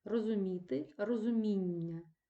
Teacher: на голос в іменнику падає на суфікс